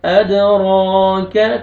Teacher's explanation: اد، را کو مرفت ہے، را کو آپ نے موٹا کرنا ہے. ادراک، کاف کو باریک پڑھنا ہے.